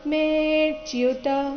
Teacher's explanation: ಮೇ ನಂತರ ಅವಗ್ರಹ ಬಂದ ಕಾರಣ ಅದನ್ನ ಸ್ವಲ್ಪ ದೀರ್ಘಕಾಲ ಹೇಳಬೇಕು